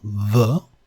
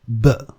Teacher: The ube would be labiodental, v, and the b would be bilabial, b.